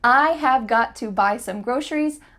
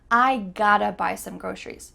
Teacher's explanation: Often the word to becomes a. I gotta. So we have the word to changing to that sound.